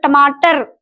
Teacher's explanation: जिह्वा राउंड होकर पीछे की ओर मुड़ जाती है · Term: मूर्धन्य